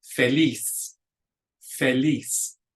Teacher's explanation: the stress goes on that last syllable